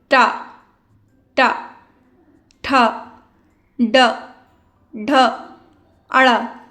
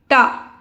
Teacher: हमारी जीभ अंदर की ओर हल्का सा बेंड करती है और फिर साउंड आता है ट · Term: ट वर्ग